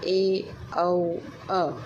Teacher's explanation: अर्धविवृत, जिन स्वरों के उच्चारण में मुंह आधा खुलता है